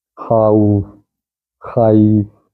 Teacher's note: زبر کی آواز اوپر جاتی ہے تو یا اس کو نیچے موڑ دیتی ہے، واو اس کو سامنے موڑ دیتی ہے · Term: واو لین